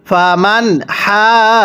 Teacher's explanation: নুনটা স্পষ্ট করে ফামান হাজাকা। হা এর মধ্যে টানতে হবে।